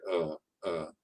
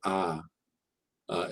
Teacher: it's like ah but you don't open your mouth as much you know just keep your mouth closed you can have them clench their teeth and just say uh